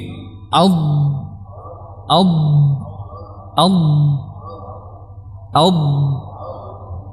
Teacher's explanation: suara pada huruf dad ini karena dia tertahan jalurnya alirannya Karena pertemuhan ujung lidah dan ujung langit-langit ya udara tadi terkurung di sini maka dia akan mendorong lidah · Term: istitalah